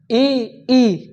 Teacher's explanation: इ ई का उच्चारण कहां होगा तालू से होगा